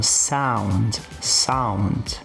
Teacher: Apesar de eu ter aqui um encontro entre O e U, eu vou fazer uma pronúncia próxima de um A.